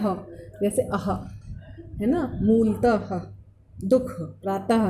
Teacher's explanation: विसर्ग का उच्चारण स्थान ह के समान होता है।